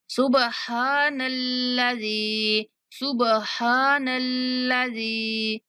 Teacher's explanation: نلذی، نلا، لام پر تھوڑی دیر زبان کو روکنا ہے، نلذی، زال کے بعد یا مدہ اسی لیے کھینچ رہی ہوں